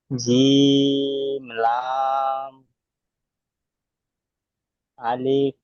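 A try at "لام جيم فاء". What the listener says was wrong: আলিফ নয়, লাম জিম ফা।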